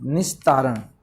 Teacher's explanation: तय क्योंकि दंत्य से हैं, दंत्य वर्ग से है, तो इसमें विसर्ग किसमें बदलेगा, दंत्य से में बदलेगा